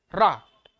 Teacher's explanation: जब हम रा बोलते हैं तो हमारे जो है जीवा में कंपन उत्पन्न हो रहा है रा कंपन उत्पन्न हो रहा इसलिए उसको हम प्रक पित बोलते